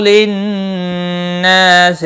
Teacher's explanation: نون مشدد پر غنہ ہوگا، الف مدہ بھی ہے، ایک الف کے برابر کھینچ کر پڑھیں گے۔